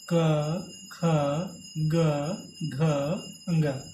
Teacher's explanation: जो कवर्ग है इसका उच्चारण हम कंठ से करते हैं, कंठ से।